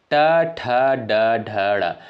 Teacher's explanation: ट वर्ग के अंतर्गत जो भी वर्ण आपके आते हैं वह किससे उच्चारित होते हैं? मूर्धा यानी मूर्धन्य से उच्चारित होने वाले वर्ण होते हैं।